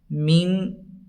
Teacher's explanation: من، یہاں اخفا ہوگا چونکہ نون ساکن یا تنوین کے بعد حروف اخفا کے 15 حرفوں میں سے شین آیا ہے، تو نون کی آواز کو ناک میں چھپا کر پڑھیں گے۔